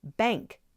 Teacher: the N, the letter N, is being replaced by the ng sound.